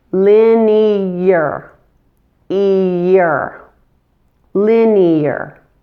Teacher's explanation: And in order to do this, so both vowel sounds are clearly distinguishable, a little Y sound is inserted between the 2 vowel sounds